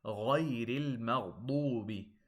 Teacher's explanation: Make sure the ghain, the two ghains, and the dad are heavy.